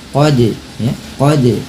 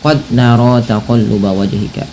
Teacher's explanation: lafal qad ada huruf dal yang berharakat sukun, maka pantulkanlah bunyinya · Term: qalqalah